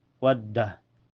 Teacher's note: Ini waw ditekan ke da karena da bertasydid.